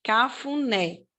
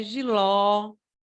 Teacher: são palavras né onde a última sílaba é mais forte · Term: oxítona